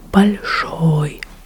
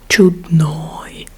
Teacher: But there is a third type of ending for the masculine gender, and it's ой, о и краткое ой. And this type of ending is very easy to recognize because it's always stressed.